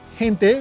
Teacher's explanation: you pronounce that as he rather than with a hard G like ge as in Gero